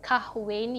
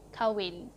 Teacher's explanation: Just strike the 'H' over here. You don't say KAH-WIN, you say KA-WIN.